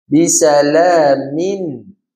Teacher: Maksud dia yang dikehendaki tu bisalamin ada rasa getaran pada hidung rongga hidung. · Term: tanpa dengung